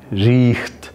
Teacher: a long vowel followed by a velar fricative ch